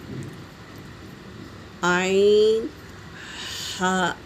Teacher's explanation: حمزہ ہا، عین ہا، عین حلق سے ادا کریں گے اور ہا کو ہوا کے ساتھ ادا کریں گے۔ عین ہا حلق کے درمیانی حصے سے ادا ہوتے ہیں۔